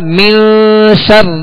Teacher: یہاں غنہ کریں گے نون پر، یہ اخفاء کا غنہ کہلاتا ہے